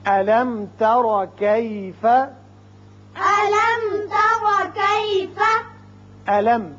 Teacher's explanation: میم ساکن ہے اور بعد میں تا ہے، یہاں اظہار ہوگا میم کا